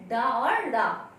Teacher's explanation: उत्क्षिप्त व्यंजन में आपके वर्ण की संख्या 2 है, डा और डा, क्योंकि इनको उच्चारण करते समय हमारी जिह्वा तालु का स्पर्श करते हुए ऊपर उठ के तुरंत नीचे गिर जाती, इसलिए इसे उत्क्षिप्त व्यंजन कहते हैं।